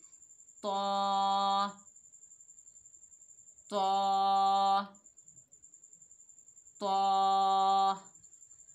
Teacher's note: जहाँ से हमने ता और दाल अदा किया था वहीं से हम तौ को भी अदा करेंगे। तौ को मोटा अदा करेंगे क्योंकि तौ मोटा हरूफ इस्ताला में से है।